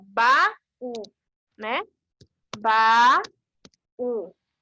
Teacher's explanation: ele vai ser oxítona e vai receber acento também na última sílaba aqui no U, que vai ser o som mais forte